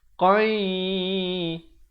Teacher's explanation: Asalnya qan, tetapi bila datang ya kena masuk beserta dengung 2 harakat. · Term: idgham bi gunnah